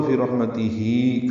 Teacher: وقفاً فی رحمتہ ملانا ہو تو فی رحمتہ ہی کھڑی زیر متصلہ، 2 حرکات لمبا کرنا ہوگا